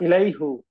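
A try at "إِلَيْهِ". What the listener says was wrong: হ্যাঁ, ইলাইহু এইবার সুন্দর হচ্ছে, ইলাইহু।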